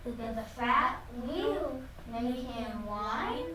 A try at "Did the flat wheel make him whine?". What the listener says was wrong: I think you said fat. My word was flat.